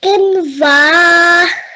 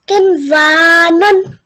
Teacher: So the waw you made longer because there is an alif after the waw, and the waw has a fatha.